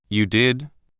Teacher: Surprise. Your voice might go up higher than usual.